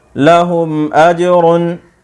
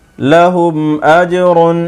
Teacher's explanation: ناظرین یہاں دیکھیں ہا پیش میم ہم میں میم ساکن ہے، اور میم ساکن کے بعد میم اور با کے علاوہ 26 حرفوں میں سے یہاں حمزہ آ رہا ہے، اس لیے یہاں پر میم ساکن کا اظہار شفوی ہوگا، یعنی غنہ نہیں کریں گے، جلدی سے پڑھیں گے۔